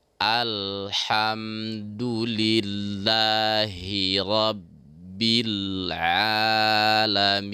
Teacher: Jadi jangan sampai kita baca he tapi hi, tetap hi.